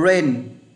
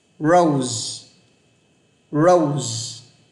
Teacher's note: Nhưng tiếng Anh chữ R này không rung. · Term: âm R